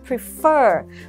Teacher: Nó có hai âm tiết và trọng âm của nó sẽ rơi vào âm thứ hai.